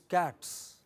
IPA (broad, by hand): kæts